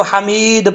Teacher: دال کیونکہ حروف قلقلہ میں سے ہے تو قلقلہ کیا جائے گا، اور جب یہ حروف قلقلہ ساکن ہوں ان میں تب قلقلہ ہوتا ہے، دال ساکن ہو رہا ہے آخر میں جب وقف کریں گے تو اس لیے اس میں قلقلہ ہوگا، ٹھیک ہے۔